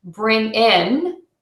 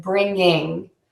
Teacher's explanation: I would say bring in with just an IN at the end of that word instead of bringing with the NG sound